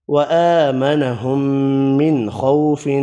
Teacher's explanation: اس آیت میں کھڑی زبر کو 1 الف کی مقدار میں کھینچ کر پڑھا، میم مشدد پر غنہ کیا، نون کا اظہار کیا، خوا پر پڑھا، خو واو لین پڑھا، فا ساکن پڑھا وف کی صورت میں.